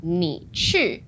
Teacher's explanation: So 你去 is like 你 third tone and 去 is fourth tone, right?